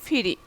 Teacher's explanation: অল্প প্রাণ ধ্বনি মহাপ্রাণ ধ্বনি হয়েছে